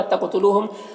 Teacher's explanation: قوف میں قلقلہ ہو رہا اور حروف مستعلیہ میں سے پر پڑھ رہے ہیں